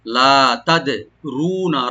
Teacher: তাটাকে open করে দাল একটু কলকলা করতে হবে · রাটাকে ডিপ করে নুনে নুন নর্মাল করে পড়তে হবে, টান হবে না